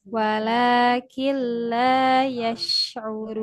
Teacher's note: lanya panjang 2 harokat. Ada fathah ketemu alif.